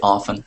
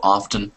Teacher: I hear 2 different ways to say that word. Sometimes we can hit that hard T sound with often. Sometimes we can forget about the T sound and just say often instead.